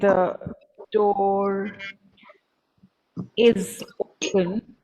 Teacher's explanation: the r here is followed by a vowel sound e it is followed by a vowel sound e so the r is pronounced here